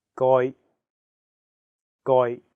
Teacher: the second character is in a high flat tone first tone